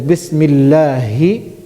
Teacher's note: Ha is pronounced from the bottom of the throat